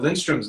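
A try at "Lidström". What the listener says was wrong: Lindstrom. There's no N. It's Lindstrom. No,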